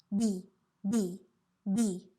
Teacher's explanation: you should have no air on your hand